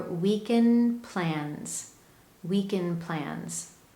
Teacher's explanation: do you notice that you don't hear a strong d at the end of weekend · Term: dropped d